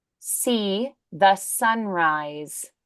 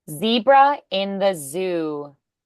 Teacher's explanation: The S is voiceless. The Z is voiced.